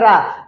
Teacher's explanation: जीभ का ऊपर की ओर या ऊपर की तरफ मुड़ना और कंपन होना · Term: लुंठित या प्रकंपित